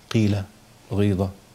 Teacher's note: الاشمام هنا عباره عن ايه ضم الشفتين قبل النطق بالقاف قيل انما الياء زي ما هي ياء ماديه ياء ساكنه مافيش